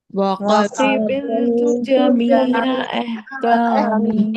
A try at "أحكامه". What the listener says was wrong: احکامی نہیں ہے، حمزہ ہا زبر احکامی.